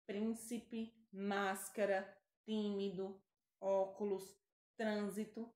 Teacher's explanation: paroxítonas quando a penúltima sílaba é a mais forte e proparoxítona a palavra que possui a antepenúltima sílaba mais forte